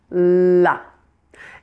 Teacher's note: It's not just the point, not just the tip of the tongue. The whole tongue is pressed against the front teeth, my top front teeth. La. And I'm also going to hold that L longer when it's at the end of a word.